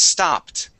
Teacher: if we add an ED to it, the word is stopped, with a T at the end